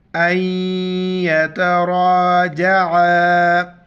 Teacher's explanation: عَلَيْهِمَا أَن يَتَرَاجَعَا، حمزہ کو یا کے ساتھ ملائیں گے، بیچ میں نون کو نہیں پڑھیں گے، یا کے ساتھ ملاتے وقت اور یہاں پر ناک میں آواز پیدا کریں گے. را پر زبر ہے، را کو موٹا کریں گے، الف کے اوپر مد ہے، چار الف مقدار کھینچنا ہے، عین کو گلے سے ادا کرنا ہے.